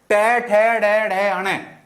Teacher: जो हमारे ऊपर वाले दांत होते हैं, इसके पीछे का जो हिस्सा होता है, इससे हमारे ऊपर वाले दांतों का जो पीछे का हिस्सा होता है वो मूर्धा कहलाता है, मूर्धन्य कहलाता है। तो हमारा जो ट वर्ग है वो कहां से बोला जाएगा? मूर्धन्य से बोला जाएगा। · मुख से निकलने वाली प्राणवायु है वो कहां टकराएगी? तो वो टकराएगी मूर्धा पर।